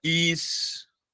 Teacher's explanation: História é uma paroxítona terminada em ditongo crescente.